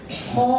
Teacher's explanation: apa alifnya hijau alifnya yang ini sebelumnya adalah huruf istila ya karena sebelum Alif adalah huruf istilla maka alifnya dibaca tebal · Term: suara Alif te tebal